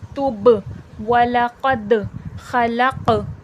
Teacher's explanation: जिस लफ्ज़ पे भी जज़म हो वो लफ्ज़ साकिन होता है। बा पे भी जज़म है, दाल पे भी जज़म है, खौफ पर भी। इन सब में आवाज़ पलट कर सुनाई देगी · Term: हुर्फ़ क़लक़ला